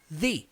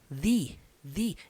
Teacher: The, língua na ponta do dente ali, the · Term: som do TH